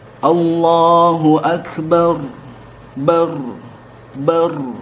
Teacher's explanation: memang ketika diucapkan lidah kita bergetar ya. Sehingga ketika mengucapkan huruf ro ini ada juga sifat at-takrir.